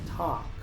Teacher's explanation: la L es muda, así que solo se pronuncia la T, la A y la K